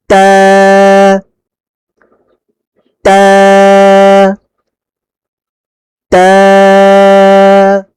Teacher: জিহ্বার আগা সামনের উপরের দুই দাঁতের গোড়ার সঙ্গে লাগিয়ে তা উচ্চারিত হয়